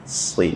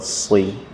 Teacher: Mirip seperti sin tapi dia tebal.